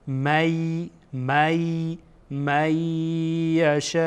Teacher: بعد از نون ساکن یا آمده، یا از حروف ادغامه، اینجا ادغام میکنیم · مد متصل هست، 4 الی 5 حرکت آن را طولانی میکنیم، الی 6 حرکت طولانی میکنیم.